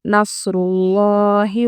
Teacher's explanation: لفظ اللہ کے نام سے پہلے پیش ہے، اس لیے ہم لفظ اللہ کے نام کو پر پڑھیں گے